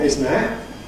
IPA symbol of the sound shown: ɪs